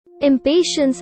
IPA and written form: ɪmˈpeɪʃəns (Impatiens)